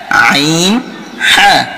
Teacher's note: হলকের মধ্যখান হইতে উচ্চারিত হয় আইন হা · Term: 2 নম্বর মাখরাজ